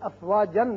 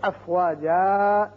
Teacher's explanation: پھر ایک الف کے برابر آواز اوپر کو کھینچی جائے گی. ایسی صورت میں جب وقف کرنا ہو تو پھر افواجن نہیں پڑھیں گے بلکہ افواجا